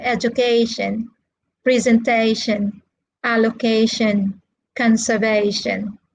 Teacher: the four syllable words are stressed on the third syllable